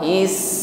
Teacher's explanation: ada nafas yang mengalir terus dilanjutkan dengan sifat berikutnya rakhawa is bunyi Sin di situ memanjang